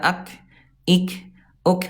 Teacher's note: huruf kaf dia syiddah, dia kuat dan hams ada udara